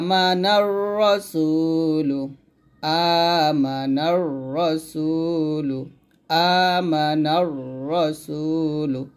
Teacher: রসুল রজবর র মোটা হবে রসুল একসাথে হবে আমানার রসুল আমানার রসুল আমানার রসুল দেখুন এই